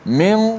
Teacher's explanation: kalau kita tutup hidung tu, min, suara kita akan berhenti. Mana kita dah masuk suara kita di hidung gunnah itu dengan tepat.